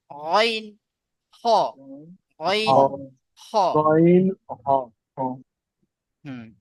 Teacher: হালাকের বা কণ্ঠনালীর শেষ ভাগ হইতে উচ্চারিত হয় অইন হ।